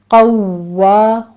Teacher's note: قوا ہونٹوں کو گول کیجیے اور واو کے پر تشدید ہے سختی سے ادا کرتے ہوئے